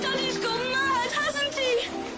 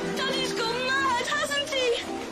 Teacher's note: the rise fall is realized on the phrase gone mad